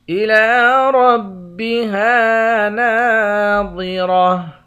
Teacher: الی ربها ناظرہ، لام کے اوپر کھڑا زبر ہے، کھڑے زبر کو ایک الف کی مقدار کھینچ کر پڑھیں گے، را کو موٹا پڑھیں گے، ہا کے بعد بھی الف ہے اور نون کے بعد بھی الف ہے، ان دونوں کو ایک ایک الف کی مقدار کھینچ کر پڑھیں گے، دونوں حروف مدہ ہیں۔